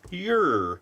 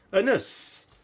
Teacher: the standard way to pronounce Uranus among astronauts or astronomers is to put the emphasis on the first syllable Ur, and they'd say the second part Anus.